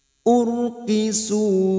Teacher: fitnati fitnati urqu ro sukun yang sebelumnya dumah ada harakat dumah ro sukun kita baca tafkim atau tebal